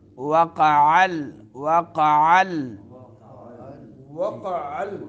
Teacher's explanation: واو ہونٹوں کو گول کرتے ہوئے ادا ہوتا ہے